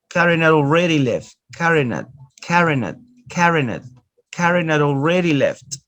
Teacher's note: Notice you omit the sound ha, but auxiliary, no main verbs, as an auxiliary.